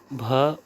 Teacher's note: भ ओष्ठ महाप्राण घोष का घोष वर्ण है।